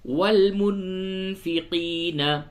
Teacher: نون ساکن کے بعد فا ہے، اس جگہ پہ اخفا ہوگا